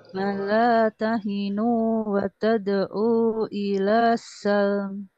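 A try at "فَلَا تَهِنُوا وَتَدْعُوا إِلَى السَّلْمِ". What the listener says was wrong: Tad'u jadi pendek lagi Bu. Hati-hati. 4 harokat ya.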